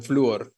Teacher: La U, que es cerrada, suena más fuerte que la O, que es abierta. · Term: hiato